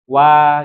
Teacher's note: wau itu dia masuknya makhrajnya adalah kedua bibir ya wau itu kedua Bi bibirnya monyong Wa gitu ya oke